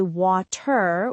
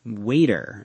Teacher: in American English, when the letter T is in the middle of a word between two vowel sounds, it is often pronounced like a soft D sound. We call this a flap T.